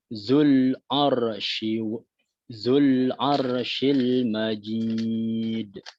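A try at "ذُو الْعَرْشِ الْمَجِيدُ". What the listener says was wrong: Di sini ada zal ya, zal yang makhrajnya perlu diperbaiki. Dijepit kepada gigi atas za, zul. Baru yang kedua adalah ain, harus pada saat ain dimatikan dengan huruf lam ya, karena di sini idhiraf, maka dia harus dimulai dengan sifat awalnya tawassud. Contohnya dzul arsyil. Dzul ar.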